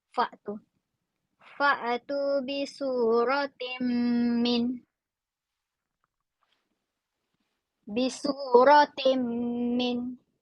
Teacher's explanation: Nampak tanwin bawah bertemu dengan mim. Bunyinya dengung.